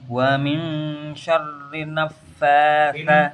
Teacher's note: nun tasdid itu hukumnya dia ditahan dulu. Gunnah dulu.